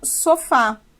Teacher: dizer que ela tem acento na última sílaba e sim que a sua sílaba mais forte a sua vogal mais forte é a última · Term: oxítona